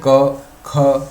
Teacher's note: उसके बाद क ख ग घ ङ, ये जो 5 वर्ग हैं, वर्ण हैं, इन 5 वर्णों का उच्चारण स्थान है कंठ। क्योंकि जब हम क बोलते हैं तो हमारी जिह्वा बिल्कुल सरल अवस्था में होती है और कंठ से जो ध्वनि है वो स्पष्ट बाहर आती है, जिह्वा का कहीं इधर उधर स्पर्श नहीं होता।